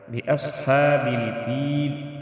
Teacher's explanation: ربک باصحاب الفیل، صاد مستعلی حروف میں سے اس کو بھی ہم موٹا ادا کریں گے. فیل وقف کی صورت میں ہم فیلی کی جگہ فیل پڑھیں گے، لام ساکن ہوگا